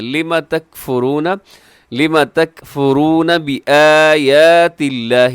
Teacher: لفظ اللہ باریک رکھیے گا، اس سے پہلے تا کے نیچے زیر ہے